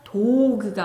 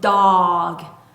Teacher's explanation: 단모음우의 소리는 입을 약간 길게 벌려선 어 어라고 소리를 낼 건데 입 앞에서 아 아가 아니라 목구멍에서부터 올라오는 느낌으로 어 어라고 소리를 내셔야 돼요. 그래서 도그가 아니고 dog 하고 소리를 내셔야 됩니다.